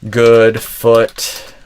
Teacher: compare it as like a kind of more relaxed version of ooh where we get this kind of uh sound